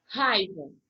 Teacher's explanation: O I não é tão pronunciado. O que é forte mesmo é o A. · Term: ditongo